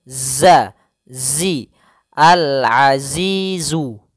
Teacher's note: huruf z harus jelas jangan ajiju jangan juga aziju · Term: zainya